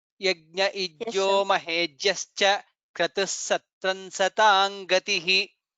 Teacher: Satam gatihi, it becomes satang gatihi.